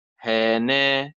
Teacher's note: النبر على حركة النون من الكلمة